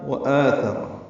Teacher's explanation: واو ہونٹوں کی نا تمام گلائی سے ادا کریں گے ، جلدی پڑھیں گے، مد بدل ہے، 2 حرکات لمبا کریں